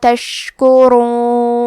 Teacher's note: کلمت تشکرون میں شین ساکن کو ہمزے سے پڑھنا ہے اور حرف را کو موٹی آواز میں پڑھیں گے کیونکہ اس پہ پیش ہے